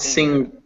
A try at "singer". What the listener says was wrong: You'd never actually pronounce that G. It's just that sound.